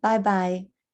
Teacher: you've got the high tone number 1, bye-bye, and then the third tone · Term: high tone number one